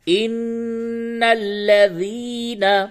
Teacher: یا ساکن سے قبل زیر ہے، یہ یا مدہ ہے، اس کو تھوڑا سا کھینچ کے پڑھیں گے تو یوں ہوگا ان الذین۔